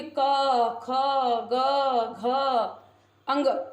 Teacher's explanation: जीभ गले को स्पर्श कर रही है। आप गले के पास आवाज रख करके बोलिए, हाथ रख करके बोलिए, देखिए क, ख, ग, घ, अंग। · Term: कंठस्थ